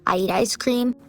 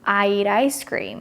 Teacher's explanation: He connected the word eat with a word ice cream and created this flap t sound in American English